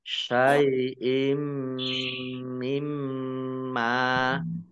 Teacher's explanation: kasroh tanwin bertemu dengan huruf mim bacaan idgham bi gunnah.